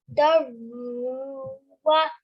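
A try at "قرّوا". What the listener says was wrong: So qa has to be joined with ra mushaddid. Qarruwa.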